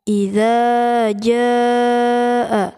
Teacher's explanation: Idza di sini dihukumi mad tabi'i dipanjangkan selama 2 harkat atau 2 ketukan. Idza ya, jadi za harus dipanjangkan 2 detik atau 2 ketukan.